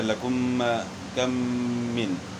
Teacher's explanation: تو اس کی مثال جو ہے نا پھر اس طرح لکم کم من، یعنی میم ساکن کے بعد میم متحرک آ جائے. میم ساکن کے بعد اگر میم متحرک آ جائے تو وہاں میم کا میم میں ادغام ہو جائے گا